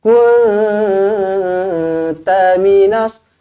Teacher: Ikhfa hakiki lah, nun kosong bertemu kaf, nun kosong bertemu ta. Ikhfa hakiki 2 harakat didengungkan.